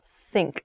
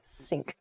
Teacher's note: So sink does not use your tongue against the back of your teeth at all. Sink, it's just a simple S sound, sink.